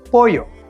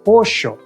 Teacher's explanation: in Argentina, that double L sound sounds like a shh